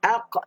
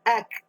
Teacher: Pangkal lidah naik ke atas dari langit ataupun anak tekak. Kalau kaf pun sama juga, pangkal lidah tapi dia ke depan sikit. Maknanya dekat dah qaf dengan kaf.